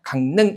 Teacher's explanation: 지금 이응 다음에 리을이 왔는데 그때 리을이 뭐로? 니은으로 발음되는 거죠. 그래서 강릉 이렇게 되는 거고요.